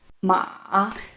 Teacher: with this third tone, your voice starts just about as low as you can go, and then it dips to where your voice starts to cut out, and then it rises again slightly